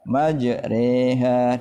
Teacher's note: Yang keempat, ra yang dibaca imalah. Nah, imalah adalah memiringkan fathah ra ke kasrah.